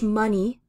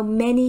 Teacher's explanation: these two words of money and many are almost identical except for the pronunciation of the vowel in the middle